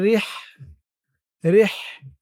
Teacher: র হাজের রিহ, রিহ, হার আওয়াজটা গলার ভিতর থেকে চিকুন হয়ে বের হবে